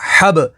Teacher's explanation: ہا با زبر حب، با حروف قلقلہ میں سے ہے تو یہاں پر قلقلہ ہوگا